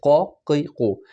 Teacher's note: قوف آپ کے زبان کے اینڈ والی جگہ سے، زبان کے اینڈ اور اوپر کے جو تالو کی جو جگہ ہے وہاں پر آپ نے کرنا ہے قوف کو،